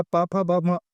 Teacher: पा, फा, बा, मा बोलने से आपके होंठों का इस्तेमाल होता है, होंठ टच होते हैं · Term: ओष्ठ व्यंजन